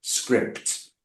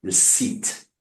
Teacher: Script, you can hear the P. Receipt, you don't hear the P, right?